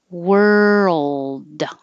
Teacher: curl your tongue back and as you're moving from r to l keep making voicing world but you don't have to release the d world hold